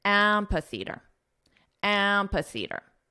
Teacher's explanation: the syllable stress is on the first syllable so let's combine the sounds together and we'll emphasize the first syllable